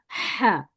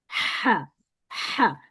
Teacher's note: تو یہ والا جو ہا ہے ہوا کے ساتھ ہوتا ہے، ہا، درمیانی حلق سے نکلتا ہے